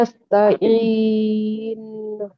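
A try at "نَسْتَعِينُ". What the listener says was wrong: हाँ, ये इन लंबा भी नहीं करना है, तो यही तो है ना, दरमियानी रखना है उसको।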